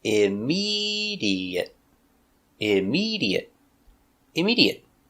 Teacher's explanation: 4 syllables. Stress on the second syllable.